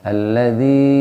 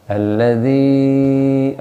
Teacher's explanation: Nah tempat keluarnya al-jauf, dari rongga tenggorokan ke rongga lisan. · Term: ya mad